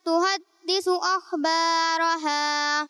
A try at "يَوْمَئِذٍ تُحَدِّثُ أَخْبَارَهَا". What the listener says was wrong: ماشاء اللہ بہت اچھی کوشش کی آپ نے بیٹا، لیکن یہ توجہ رکھنی ہے کہ ذال اور سا میں سیٹی کی آواز نہیں آئے گی، ٹھیک ہے؟ اسے یومئذن نہیں پڑھنا بلکہ پڑھنا ہے یومئذن، اور اسے تحدثو نہیں پڑھنا بلکہ پڑھنا ہے تحدثو.